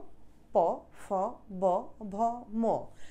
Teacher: পফ বভ ঠোট লাগে উষঠ ব্যঞ্জন বলে এদেরকে